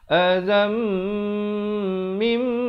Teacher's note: Asalnya azan, zal tanwin di atas bunyi zan, tapi bila datang mim terus masuk beserta dengung dua harakat. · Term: idgham bi gunnah